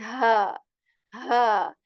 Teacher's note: we are going to feel vibration, or the hemming sound in ha